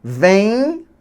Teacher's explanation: Você vê que esse M está nasalizando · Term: nasalização